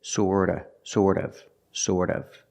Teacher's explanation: the T in sort of is pronounced with a fast D